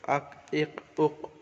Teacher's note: হামজা কফ জবর আক, জিবের গোড়া এবং তার বরাবর উপরের তালু